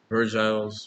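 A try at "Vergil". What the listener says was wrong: It's like you're saying virgin.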